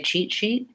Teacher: when I say cheat sheet I am gliding a little bit more and so my SH sound is longer